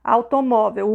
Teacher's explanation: Automóvel, o mó é mais forte, tá vendo? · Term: sílaba tônica